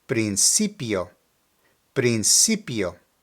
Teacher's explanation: in this particular word the emphasis is located on the CI